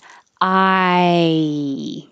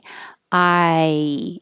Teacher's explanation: Just let your tongue slide and blend together, but you have to go high enough when you finish the I vowel. So here is I, starting open, ah, and moving to E.